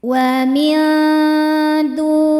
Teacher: Karena nun sukun bertemu dengan huruf dal. Cara bacanya nun disamarkan ke dal disertai dengungan. Dengungnya sedikit karena dal makhrajnya masih dekat dengan nun. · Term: ikhfa hakiki aqrab